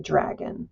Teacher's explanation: There's a little bit of a chirping sound at the beginning.